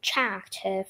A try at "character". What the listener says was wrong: Character, remember, not cha. Uh, it's a strange spelling, ch, but we say character.